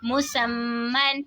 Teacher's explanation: मीम मुशद्दद में गुन्ना करके पढ़ेंगे, दो ज़बर की तनवीन